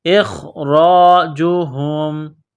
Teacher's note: حمزہ کو خا کے ساتھ ملانا ہے، خا کو موٹا کرنا ہے، را کے اوپر زبر ہے، را کو موٹا کرنا ہے